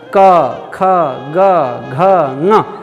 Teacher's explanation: जैसे क ख ग घ ङ, क ख बोलते समय हमारे दोनों होंठ आपस में टकराए नहीं, दांत भी टकराए नहीं, जीभ आकर दांत में भी टकराया नहीं, क तालू में टकराता है, क ख ग घ ङ, जीभ जाकर पीछे का, जीभ का एकदम पीछे का हिस्सा तालू में टकराता है। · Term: क वर्ग